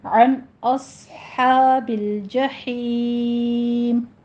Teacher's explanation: عن میں نون ساکن کا قاعدہ اظہار حلقی کرنا ہے. اس حمزہ باریک ہی رکھنا ہے، حمزہ کو موٹا نہیں کرنا، اوس نہیں کہنا، ٹھیک ہے.